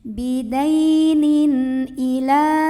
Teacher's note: tanwin ini dibaca dengan jelas, bunyi an ya, dan tidak perlu ditahan. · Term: idhar halqi